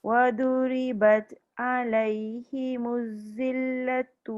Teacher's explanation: Jangan putuskan zal tu sebab dia ada rokhawah kan.